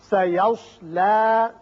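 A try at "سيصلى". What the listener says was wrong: صاد ذرا موٹا کر کے، سیصلی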